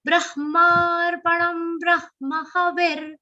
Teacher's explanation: Now see, in this, how many long sounds in the first children? Only Brahma. That is, the ma is the long sound. Rest everything is short, so it should be said swiftly. And it is ending with a short sound.